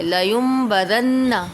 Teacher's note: نون ساکن کے بعد با آ رہا ہے تو نون ساکن کو میم سے بدل کر اخفا کریں گے یعنی غنہ کریں گے